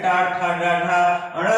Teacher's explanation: हमारी जीभ का जो अगला वाला भाग है वह तलवे के पीछे जाकर के ऊपरी भाग पे टच करती है, इसे मूर्धा कहा जाता है। · मूर्धा से उच्चरित होने के कारण इन सभी ध्वनियों को मूर्धन्य कहा जाता है।